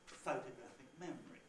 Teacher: the important thing is to remember this stress clash here two levels of prominence